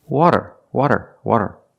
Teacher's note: It's not a rolled r. It's a flap t or a fast d.